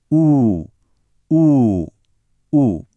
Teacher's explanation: आफ्नो दाँतहरूलाई एकै ठाउँमा ल्याएर ऊ भन्नुहोस्, तर ओठलाई चाहिँ नखुम्चाउनुहोस् है।